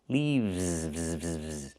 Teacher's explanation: We use the letter V and pronounce it VV plus the S making a Z sound like in zebra.